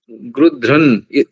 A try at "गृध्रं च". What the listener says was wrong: गृध्रं च it's not na it's nya